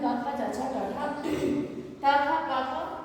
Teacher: अघोष हो गया, यानी इसमें कंपन नहीं है